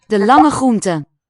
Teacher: It's hard to really hear the r as continuing as a separate segment, as a distinct one. I think they will have assimilated, so it could just be a long fricative.